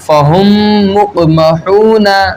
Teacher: ایک اور میم آ گیا، تو اب اس میم میں ادغام شفوی ہوگا یعنی غنہ کر کے پڑھیں گے